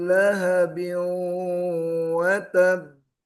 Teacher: ada dengung antara huruf ba dan wau. Biu masuk ke hidung dan ada ee bnya di sini qalqalah bertasdid di akhir maka watab watab agak tertahan sedikit.